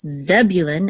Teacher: And in English, it's Zebulun, accent on the first syllable. But in Hebrew, it's Zevulun, accent on the last syllable.